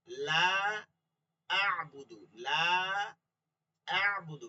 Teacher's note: খেয়াল করেন লা টান দিছি